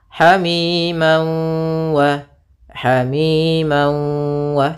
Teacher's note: fathat beremu wau ini namanya idgam bhunah atau Idam maal gunah cara membacanya yaitu masukkan tanwinnya ke wau sambil ditahan gunahnya dua harakat Hamim wa Hamim wa tidak langsung Hamim wa tapi tahan dulu